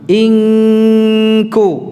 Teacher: Kalau di sini makhraj huruf kaf, jadi dipangkal lidah.